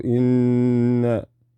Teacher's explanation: So you don't need to stutter, you just need to give it 2 seconds in ghunna, because it has a shadda, the noon